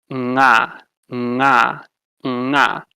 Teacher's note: Velar, you use the body of your tongue and put it more towards the back